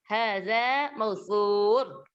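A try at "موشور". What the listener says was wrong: Pakai shin Ibu. Syur.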